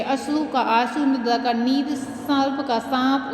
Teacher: कभी कभी दो ध्वनियाँ अनुनासिक नहीं हैं, उन्हें भी अनुनासिक कर देते हैं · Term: अनुनासिकरण